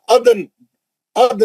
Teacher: नून का जेर नहीं पढ़ेंगे, नून को साकिन करके